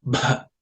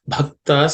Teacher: Bha, this bhakta, this bha is the fourth letter in the pa varga. So it has to be aspirated with or said with some emphasis.